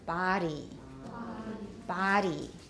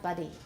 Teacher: body has a very long I. It's not buddy.